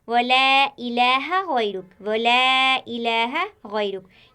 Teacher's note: यहाँ गैरुक में गैन और रा मोटे पढ़े जा रहे हैं, गैन और रा मोटे पढ़े जा रहे हैं क्योंकि गैन मोटे हर्फों में से आता है।